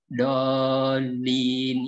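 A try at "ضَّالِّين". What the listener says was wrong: Kurang tasydidnya Pak. Dol, ada tasydidnya tuh. Dolin. Bukan dolin. Dolin. Dolin.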